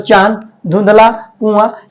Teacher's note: चंद्रबिंदु जिसे बोलने में नाक और मुंह दोनों की सहायता लेनी पड़ती है